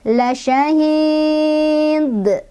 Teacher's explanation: Sebab ada dal yang sukunnya karena berhenti. Dal itu huruf qalqalah ya. Dia sukunnya karena diberhentikan. Makanya dibacanya pantulannya besar. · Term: qalqalah besar